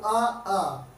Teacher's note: आ, मुख हमारा खुला रहता है, इसीलिए इसको अवृत्तमुखी कहते हैं।